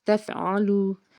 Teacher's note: عین حرف ہلکی کا حرف، حلق کے درمیان سے اس کو ادا کرنا ہے، آگے واو ساکن سے پیچھے پیش ہے، کھینچ کے ادا کرنا ہے۔